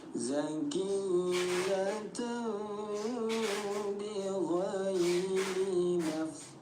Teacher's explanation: Cara baca iqlab bunyi tanwin kita samarkan, kita rubah bunyi mim yang tadinya zakiyatan bih menjadi diganti bunyi miyatan dibaca samar dan dengung selama dua harakat